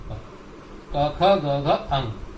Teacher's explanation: क ख ग घ अंग, तो इन ध्वनियों को कहते हैं कंठ्य। समझ लीजिए, उच्चारण स्थान कंठ है और ध्वनि कंठ है। · इन वर्णों का उच्चारण स्थान कंठ है। क ख ग घ अंग, तो इन ध्वनियों को कहते हैं कंठ्य।